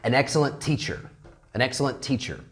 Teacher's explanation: if we have one word like excellent, and then another word beginning with a T, the same consonant, okay, we omit one of the T's.